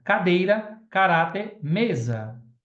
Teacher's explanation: A sílaba tônica é a penúltima da palavra.